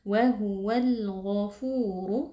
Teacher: Pastikan dia itu tebal karena ghain ini merupakan huruf tafkhim ya, atau huruf isti'la, jadi kita baca dengan mengangkat pangkal lidah